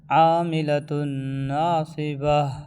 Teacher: گولتا رکنے کی حالت میں ہا بن جاتی ہے